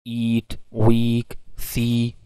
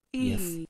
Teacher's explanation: now the tongue has gone close to the roof of the mouth, so actually this is why it is called the high front vowel